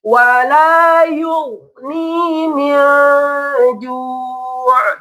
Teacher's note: Kurang ditahan, huruf goinnya nggak boleh mantul